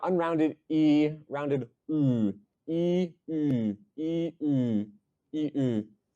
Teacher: pairs of vowels that are in the same place, but one of them's rounded, has the lips out, and one of them doesn't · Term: rounded and unrounded